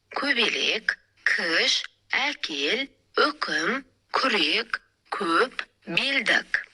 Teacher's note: К дыбысы жіңішке дауысты дыбыстармен тіркесіп, жіңішке буындарда ғана айтылып жазылады.